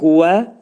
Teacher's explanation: Dodaqlar qönçələnir və ə deyirik.